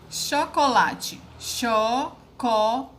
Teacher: A sílaba mais forte foi o lá. Então, ela está na penúltima sílaba. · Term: paroxítona